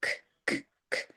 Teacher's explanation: So this is a unvoiced sound. Your vocal cords are not used.